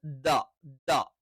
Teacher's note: നാവിന്റെ മുകൾഭാഗത്തോട് ചേർന്നു കിടക്കുന്ന അറ്റം അത് മേൽവരിയിലെ മുൻപല്ലിന്റെ മോണയിൽ ചേർത്തു വെച്ചിട്ടാണ് · ഉച്ചാരണത്തിൽ കാറ്റ് വരാൻ പറ്റില്ല എയർ വരാൻ പറ്റില്ല